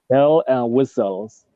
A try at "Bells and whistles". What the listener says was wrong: Bells and whistles. Don't forget to pronounce the S when there's an S. Bells and whistles.